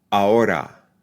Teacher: I'm being careful not to pronounce that final unstressed a as a schwa